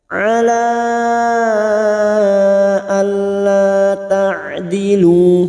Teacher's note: Ada mat yang bertemu dengan hamzah di lain kalimat, mat jaiz munfasil, 5 harokat kita panjangkan.